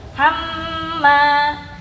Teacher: Mim tasdid ini ada 2 ketukan ya, seperti dengung dia. Hamma, tahan dulu dia 2 ketukan.